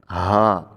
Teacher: ہا بھاری ہا ہے، 2 چشمی ہا اس کو بولتے ہیں. اس کو بھارا کر کے پڑھا جاتا ہے، دھمک کے ساتھ پڑھا جاتا ہے. ہا.